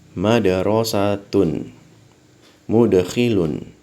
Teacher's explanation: Jadi dibacanya ada pantulannya. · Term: qalqalah